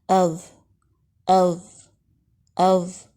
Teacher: اب ہم ساکن کے ساتھ دیکھیں گے، حمزہ زبر ذا اذ، ا باریک ہے، ذا بلند ہے، آپ نے ا کو باریک پڑھنا ہے، ذا کو بلند پڑھنا ہے